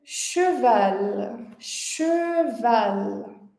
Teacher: a gente vai fazer um bico e vai pronunciar um e, mas com lábio completamente arredondado e quase fechado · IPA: /ə/